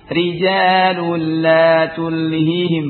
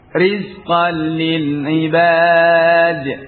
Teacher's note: ra ketika dikasrah dibaca tipis